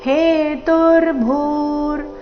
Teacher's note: ಭೂ ಮಹಾಪ್ರಾಣ ದೀರ್ಘ ಬರಬೇಕು.